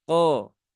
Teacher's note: Kemudian kof ya ditebalkan ko ya, bukan ko ya. Tidak perlu monyong bibirnya karena kofnya di situ harokatnya fathah ya